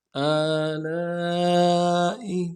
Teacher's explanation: حمزہ کے اوپر کھڑا زبر ہے، ایک الف کی مقدار میں کھینچیں گے، لام کو نرم سے ادا کریں گے، لام کے ساتھ الف مدہ ہے، الف مدہ کے اوپر مد اصلی ہے، تین الف مقدار میں کھینچیں گے، حمزہ کو نرم سے ادا کریں گے۔